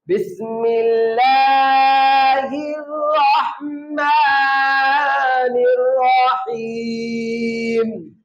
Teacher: ہا گلے کے درمیان سے آواز آتی ہے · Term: عرب ہا